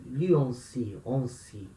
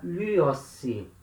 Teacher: A letra nu, diante do sigma, ela tem a tendência de cair.